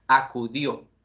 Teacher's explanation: Acu serían las sílabas átonas, mientras que dio sería la sílaba tónica